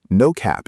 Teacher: No cap is quick, 2 short syllables, both equally stressed.